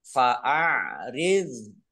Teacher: Fa'ariz. Nah, dzok sukun bukan kol-kolah, jangan dipantulkan.